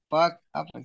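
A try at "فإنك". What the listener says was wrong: fa'innaka ya itu harusnya ada hamzahnya.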